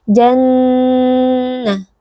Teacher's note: Jannah, di sini terdapat nun al-musyaddadah, nun yang bertasydid, maka wajibul gunnah, wajib dibaca dengan dengung yang dipanjangkan